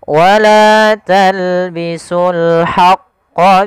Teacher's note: Kemudian qanya ditasydidkan kita tebalkan dulu.